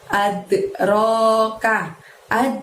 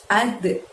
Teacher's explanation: ada dal sukun, maka kita mantulkan pengucapannya ad gitu ya. Ad, ro-nya panjangnya 2, lalu ka-nya pendek.